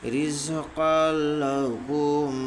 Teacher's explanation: 2 زبر کی تنوین کو بلا گنہ ملا کر پڑھیں گے. اس کو ادغام تام بلا گنہ کہتے ہیں.